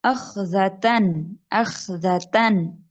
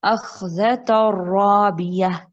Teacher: جو نون اینڈ میں آ رہا ہے چھپا ہوا، اس کو ہم پڑھ نہیں رہے جب ہم آگے سے ملاتے ہیں